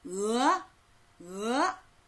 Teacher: 입의 안쪽, 혀 뒤쪽에서 소리가 나지요?